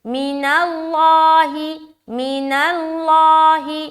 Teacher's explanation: لفظ اللہ کا لام موٹا ہوگا